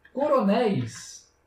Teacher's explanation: Na palavra, por exemplo, coronéis, vocês percebem que aqui tem um ditongo éis. Esse ditongo ele é aberto. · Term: ditongos abertos